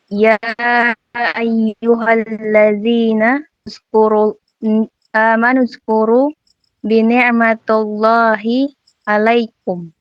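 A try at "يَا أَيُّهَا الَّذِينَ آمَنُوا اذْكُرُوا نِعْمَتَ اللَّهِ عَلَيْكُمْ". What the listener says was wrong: Walang B dito. Diretso ka lang sa ni'ma. Yung narinig ko ay bini'ma. Walang B dito, ha? Okay, diretso ka lang dito.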